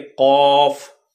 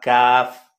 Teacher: اب یہ جو قاف اور کاف ہے، ان میں آپ دیکھیں کہ آپ جب منہ کو بھر کے قاف، تو یہ نکھر جائے گا، اور کاف جو ہے وہ بالکل ہلکا کاف، یہ ایسے پڑھا جاتا ہے۔